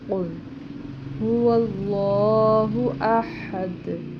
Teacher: یہاں پر بھی لام موٹا ہوگا اللہ کا، اور اس کو لمبا بھی کریں گے، اور دال پہ وقف کر رہے ہیں، آیت ختم ہو رہی ہے تو دال حروف قلقلہ میں سے تو اسے احد یعنی قلقلہ کر کے پڑھیں گے